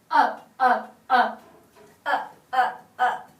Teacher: She demonstrated a hard glottal attack. It was dry and strong and dry sounding.